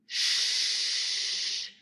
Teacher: there is no voicing nothing is happening in your larynx so it's a voiceless sound Shh you'll feel the tip of your tongue moving towards your · teeth but it's not fully touching it is very very close it's making a hissing sound so it is a fricative so this is a voiceless postalveolar fricative · in your larynx so it's a voiceless sound Shh you'll feel the tip of your tongue moving towards your alveolar Ridge behind your teeth but it's not fully touching it is very very close it's making a hissing sound so it is a fricative so